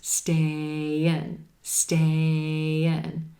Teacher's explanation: A as in gray at the end of stay, I as in silver pen at the beginning of in, and the voice continues between those words, combining the sounds with a gentle y, y, y sound. Y, y. Stay in.